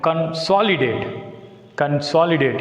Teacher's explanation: Here the word begins with the prefix CON. That's why it takes stress on the second syllable S.